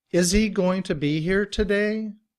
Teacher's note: in reduced form, we drop the sound of the H, and combined with is, we say is he. We just say E for he.